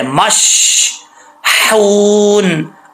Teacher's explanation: آگے ہا ہے، اس ہا کا تعلق حلق کی طرف ہے، سینے کی طرف نہیں ہے، تو اس ہا کو بریک پڑھا جائے گا